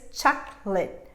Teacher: I have two syllables here, chocolate. This last sound that would be late is in fact a schwa sound. It's reduced